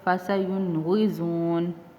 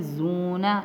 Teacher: واؤ ساکن اور اس سے پہلے حرف پیش ہے، تو یہاں پہ زونا، اسی لیے میں نے اس کو تھوڑا سا لمبا کیا تھا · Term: واؤ مدہ